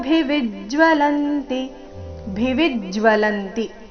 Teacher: ಎಲ್ಲ ಅಕ್ಷರಗಳು ರಸ್ವ ಭಿವಿ ಮೇಲೆ ಆಘಾತ ಇದೆ